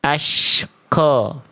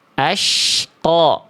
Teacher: Tidak mengerucutkan bibir, tidak ada embusan udara yang keluar.